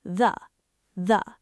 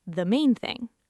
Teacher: Keep the tip inside your mouth, resting lightly against the back of your top front teeth. Let out a tiny buzzed friction burst and drop directly into a schwa. The. It's not the main thing, it's the main thing. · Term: dental proximity reduction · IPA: [ðə]